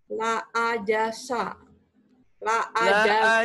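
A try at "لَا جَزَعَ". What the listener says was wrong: Bukan la ajasa. Zainya jadi sa. La ajasa. Z. Zaitun. Bukan. Ini Z. Zaitun nih.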